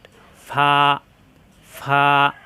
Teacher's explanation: দুই ঠোঁট একাত্র হবে না উপরের দাঁতের আগা নিচের ঠোঁটের পেট